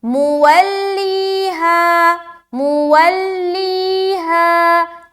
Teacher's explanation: لی میں پریشر کیونکہ یا مدہ ہو رہا، ہاں میں بھی کھینچ رہی ہوں کیونکہ الف مدہ ہو رہا